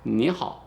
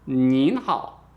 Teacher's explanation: Make sure you stress this n at the end here so they know you're saying the 您 好 and not the 你 好